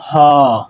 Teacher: মুখের মধ্যে কোথাও বাধা প্রাপ্ত হচ্ছে না। সেজন্য হটাকে বলা হয় হচ্ছে কন্ঠনালীয় ব্যঞ্জন ধ্বনির উদাহরণ বা কন্ঠনালীয় ব্যঞ্জন ধ্বনি। · হটা একদম ভেতর থেকে, অর্থাৎ আমাদের ভোকাল কর্ড থেকে উচ্চারিত হয়ে আসে। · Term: কণ্ঠনালীয় ব্যঞ্জন